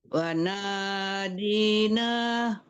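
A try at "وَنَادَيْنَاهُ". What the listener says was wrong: Bu, bukan wanadi tapi wanadaina. Jadi Bu ngelihat harakatnya ya, jangan sampai salah.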